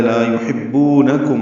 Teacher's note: حا وسط حلق سے ادا کریں گے